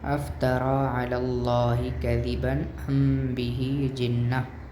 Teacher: اس غنہ کی مثال میں ہم دیکھیں گے، اس غنہ کی مثال میں دیکھیں کہ ام میم ساکن ہے، یعنی کہ افتریٰ علی اللہ کذبا ام میں میم ساکن ہے اور میم کے بعد با ہے، تو یہاں پر اخفا شفوی ہوگا۔ یعنی اس کی جو غنہ ہوگا وہ 2 سے 3 سیکنڈ کا ہی ہوگا، اور اس کو اخفا شفوی کہا جاتا ہے · اگر میم ساکن کے بعد حرف با آ جائے تو وہاں اخفا شفوی ہوتا ہے، یعنی غنہ خفیف ہوگا۔